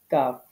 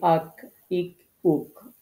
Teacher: হবে আমাদের মুখের ভিতরের অংশের দিকে একটু আগে এবং তার বরাবর উপরে যে তালু সেই তালুর সাথে লাগিয়ে আমরা যে হরফটি উচ্চারণ করব সেটির নাম হচ্ছে কাফ